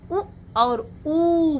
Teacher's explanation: स्पर्श करते हैं, इसलिए होठों का स्पर्श हो रहा है ऊ बोलने में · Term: ओष्ठ वर्ण